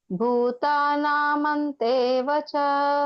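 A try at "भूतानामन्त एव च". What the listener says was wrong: ಮಂತ್ ಅನ್ಬಾರ್ದು, ಮಂತ full ಹೇಳಿ. ಭೂತಾನಾಂ ಅಂತ ಅದು ಭೂತಾನಾಮಂತ ಹಂಗೂ ಹೇಳ್ಬೋದು. ತಾ ಫುಲ್ ಹೇಳಿ ಅಷ್ಟೆ.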